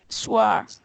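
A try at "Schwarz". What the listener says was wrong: No, you have to. The A is an O sound. War. Or. Wait, say O. O. Because when you say it, it kind of sounds like R. It's or. War. It like becomes another one. It's only the O sound. War.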